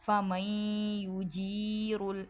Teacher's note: نون کے بعد یا ہے ادغام ہے نون ساکن کے بعد تو ادھر بھی غنہ کریں گے اور را کو موٹا پڑھیں گے، کافرین من عذاب علیم۔